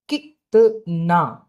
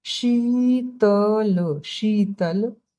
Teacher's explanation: अब इ को हिचके लेते हैं तो ई को गाना गा के पढ़ते हैं